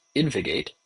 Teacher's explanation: But the V followed by the G is a little bit hard to pronounce. So everybody I've heard pronounce it says InvGate, as if there's another vowel in there.